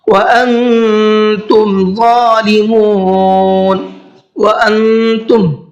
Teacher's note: نون ساکن کے بعد میں تا ہے، نون میں اخفا کریں گے۔